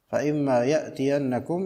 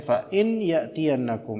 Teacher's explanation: Fa imma asalnya adalah in dan ma, dileburkan menjadi mudgham.